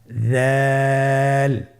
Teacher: জালের মাখরাজ হলো জিহ্বার আগা সামনের উপরের দুই দাঁতের আগার সঙ্গে লাগিয়ে উচ্চারিত হয়। তাহলে আপনারা জিহ্বার আগা সামনের উপরের দুই দাঁতের আগার সঙ্গে লাগিয়ে উচ্চারণ করুন। · জাল হরফটিও বারিক হরফ উচ্চারণ করার সময় অবশ্যই তিন আলিফ টেনে পড়তে হবে। জালের মাখরাজ হলো জিহ্বার আগা সামনের উপরের দুই দাঁতের আগার সঙ্গে লাগিয়ে উচ্চারিত হয়।